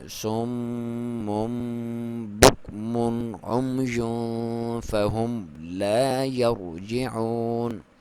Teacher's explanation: یہاں پہ جب دو بار آپ ناک میں سے آواز نکالیں گے اور دونوں کی لمبائی آپ ایک الف تک کر سکتے ہیں۔ پہلی بار جب پڑھتے ہیں سوم تب بھی، پھر موم تب بھی، سوم موم بک مون عمی فہم لا یرجعون۔ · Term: اقلاب